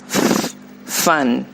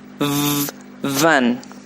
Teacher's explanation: consonants which are essentially the same except for the element of voicing. For example, f as in fan and v as in van. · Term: voiced or unvoiced